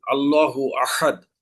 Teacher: হা গলা চিপে আদায় করতে হবে